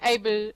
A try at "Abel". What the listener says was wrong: Yes, Abel, not Abe, Abel.